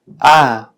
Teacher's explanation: similar casi la vocal a de la palabra española partir pero en inglés es pronunciada con la lengua ligeramente más avanzada es decir más próxima al extremo anterior de la boca y también ligeramente más cerrada